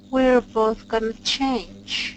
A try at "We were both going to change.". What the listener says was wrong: Give me more second W. We were